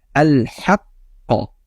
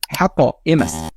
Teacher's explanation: Birinchisi eng kuchli darajadagi qalqala. Bunda qalqala harf so'zining oxirida kelib o'zi bilan tashdid olib ketsa va shu harfda to'xtalish sodir bo'lsa, qalqala harfi kuchli tarzda ifodalanadi.